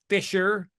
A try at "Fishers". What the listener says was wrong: Fishers. With an S, but it's pronounced like it has a Z.